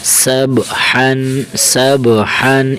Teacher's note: सीन बा ज़बर सब ह दो ज़बर हन इस ह को बारीक करेंगे। मोटा नहीं करेंगे।